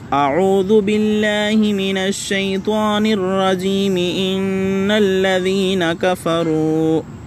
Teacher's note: یعنی تعوذ اور آیت کو ملا کر ایک ہی سانس میں پڑھنا، جیسے اعوذ باللہ من الشیطان الرجیم، ان الذین کفروا، وصل ہے۔